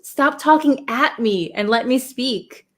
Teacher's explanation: we usually emphasize or stress the at